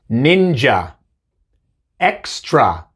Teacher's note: En estas palabras viene al final y dice A. El schwa, A.